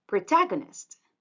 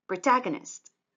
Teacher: the stress syllable is the second one